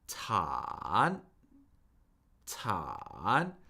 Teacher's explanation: It's the falling and rising tone. And notice how the third tone rises up higher than where it started · The third tone is the falling and rising tone. · So with a third tone, we start technically just below our normal speaking pitch, just below. The pitch falls